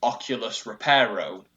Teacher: with repair the stress is on the second syllable